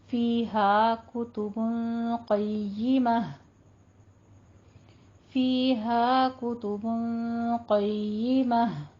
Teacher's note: फीहा में हमारी दो मद्दा एक ही जगह आ रही हैं, या मद्दा अलिफ मद्दा, दोनों की मिकदार बराबर रखनी है, इसको बराबर पढ़ना है।